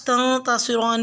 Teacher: نون ساکن پہ اخفا کریں گے، یعنی چھپا کے پڑھیں گے آواز کو ناک میں، اور صوت کو پر ادا کریں گے۔